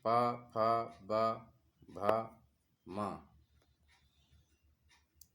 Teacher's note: जिन व्यंजनों के उच्चारण में दोनों ओष्ठों द्वारा श्वास का अवरोध होता है उन्हें ओष्ठ व्यंजन कहते हैं